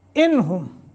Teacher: لو یہ حرف مدہ وہ ساکن ما قبل ضمہ ہے. انہم، نون ساکن کے بعد ہا حروف حلقی میں سے ہے، لمبا نہیں کریں گے، اظہار کریں گے